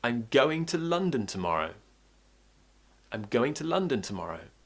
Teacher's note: But I'm still making going and London clear and emphasized because it paints the picture.